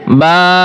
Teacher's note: প্রত্যেকটি হরফ আমরা এক আলিফ করে টান দিব।